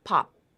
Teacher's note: So the lips stay closed at the end of that sound. You don't have the release of pop. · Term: unreleased P